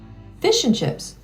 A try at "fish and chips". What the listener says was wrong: why do you put the accent on the fish